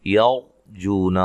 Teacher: را کو موٹا پڑھنا ہے، اس سے پہلے زبر ہے